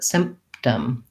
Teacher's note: i do have to close for the p so i just don't release it